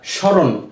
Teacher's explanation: আমরা স্মরণ এভাবে পড়েছি কিন্তু ম এর কোন উচ্চারণ আসেনি কেননা যদি কোন শব্দের প্রথম বর্ণের সাথে ম ফলা যুক্ত হয়